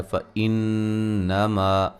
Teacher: नून मुशद्दद पे गुन्ना ज़रूरी है। मा अलिफ मद्दा है।